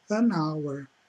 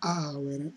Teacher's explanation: Porque se você fosse fazer a hour, ia ficar meio desconexo, então para ficar mais ligado, ficar mais sonoro, mais bonito, então você tem esse N aí para conectar então esse pronome à palavra